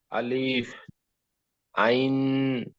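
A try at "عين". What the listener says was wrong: আইন করবেন না, দেখেন আইনের মাঝখানে টান দেবেন, আইন নয়, আইন।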